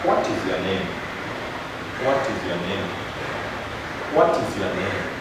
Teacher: You fall at the end. It's a WH word. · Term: falling intonation